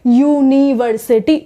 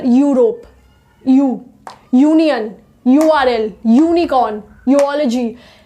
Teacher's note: यू का sound ये produce कर रहा है, वॉवल साउंड नहीं दे रहा है, इसीलिए हम इसके आगे अ लगाते हैं।